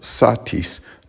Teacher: with satis, the normal stress would be on the first syllable, satis, not satis.